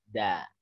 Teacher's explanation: Teorinya itu ujung lidah bertemu gusi atas. Gusi ya, bukan langit-langit. Antara gigi dan gusi. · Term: dal tanpa titik